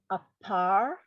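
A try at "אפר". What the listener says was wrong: No, so that is a fe. That second letter has no dot. Afar.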